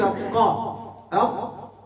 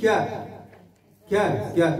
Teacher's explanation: لما تقول أنت قا أق تحس صح باللي كاين انقفال، تحس حس يعني، لكن لما تقول كا كا كا تحس أنه صح ما كانش هذيك القفلة ، لا توجد هذيك القفلة من أو ذاك الضغط من أين